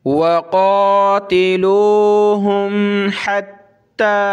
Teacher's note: क़ाफ़ को मोटा करेंगे, खड़ा ज़बर है।